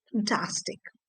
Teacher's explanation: So the F-A-N, fantasy, has a sound A, the first sound which we earlier discussed. But in the form fantastic, the A changes to the shorter version, that is the second sound, fantastic.